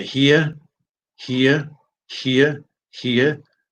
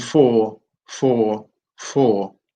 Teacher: in British English neither of those ends with R they look like they end in R but in in British